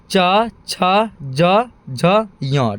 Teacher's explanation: अगला है तालु। तालु से निकलता है च वर्ग, ठीक है। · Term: तालव्य